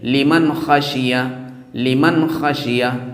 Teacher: اسی طرح دیکھیں لمن، اب یہاں نون ساکن آ گیا، لمن، لمن، اب نون ساکن کے بعد خا آ گیا، اور خا ہے حروف حلقی، حمزہ ہا، عین ہا، غین خا، تو خا حروف حلقی ہے، اس لیے اس کے نون کو ظاہر کریں گے اور ناک میں آواز نہیں جانے پائے، غنہ نہیں کریں گے